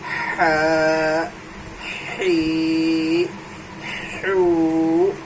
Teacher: درمیان حلق سے ہا ادا ہوتا ہے